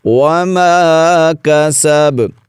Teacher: با پر وقف کی حالت میں قلقلہ کریں گے